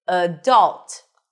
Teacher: Stress is on the second syllable.